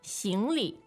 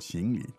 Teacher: So, the tones are... Second and neutral.